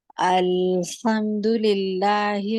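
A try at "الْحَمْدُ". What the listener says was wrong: अल ऊपर टाइम नहीं देना, अल नहीं कहना। अल्हम्दु, हे नहीं है, हे नहीं है, ही ही।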